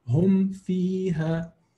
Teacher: No lengthening, no merging, no nothing. Just simple meme, simple fa. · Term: idhar